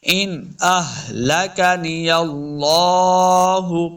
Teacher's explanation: ان نون ساکن کے بعد آگے حمزہ ہے حروف خلقی سے تو اظہار کر کے پڑھنا ہے، یعنی بغیر غنہ کے پڑھیں گے